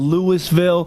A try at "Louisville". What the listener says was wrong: Louisville. No, it's Louisville, because the S is silent.